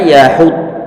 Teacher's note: Yahud dimonyongkan, dotnya disukunkan berarti bibir datar. Yahud. Kemudian dot yang kedua ditambahkan, maka kita monyongkan kembali.